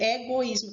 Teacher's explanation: Observe, egoísmo, eu consigo dizer egoísmo, tem a sonoridade das duas vogais, porém o I se sobressai, é o hiato.